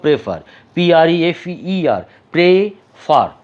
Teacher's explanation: দেখতে পাচ্ছি যে লাস্ট যে সিলেবল প্রেফার আমি জোর দিয়েছি